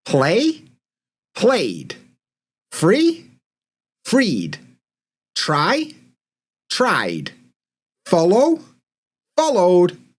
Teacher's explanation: in English, the vowels are voiced, so they're going to follow the same rule as the voiced sounds, and we're going to add d.